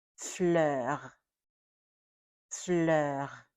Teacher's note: That R at the end has to be pronounced. It's not a soft R. It's a strong R. We have to be able to hear it.